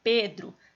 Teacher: Pedro também é só tem duas sílabas mais a penúltima é mais forte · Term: paroxítona